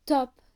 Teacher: sounds produced by placement of the tongue behind a small Ridge called alv which lies behind your Upper Front Teeth just above